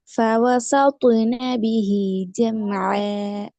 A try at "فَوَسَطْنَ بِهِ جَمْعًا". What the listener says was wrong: திருப்பியும் சாக்கு தான் வருது அடுத்து இப்போ சா தான் வருது فوسط س س سط فوسط ف و س மூணு ஒரே வடிவத்தில் வரும்